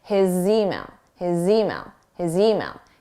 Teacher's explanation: So it will sound like his email, Z-mail. You'll hear the Z on the word email, but then you cannot have a pause between his and email. You need to pronounce them together. · His, although the spelling is an S, it's a Z, a voiced sound, so it's a Z. So we can use that to link to the next word because the next word starts in a vowel.